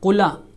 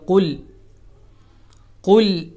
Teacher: قل کا جو لام ہے وہ بالکل ساکن ہے، اس کو حرکت نہیں دی جائے گی، قلا نہیں کہا جائے گا.